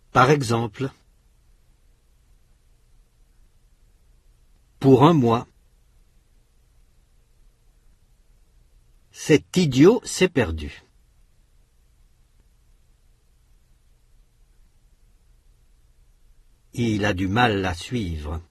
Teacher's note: la consonne finale du premier mot est prononcée avec le mot suivant, pour former une syllabe ouverte. Les 2 mots sont alors enchaînés. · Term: l'enchaînement consonantique